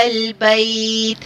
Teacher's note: مد لین عارض کے اندر کسر یعنی 2 حرکت پڑھا جائے گا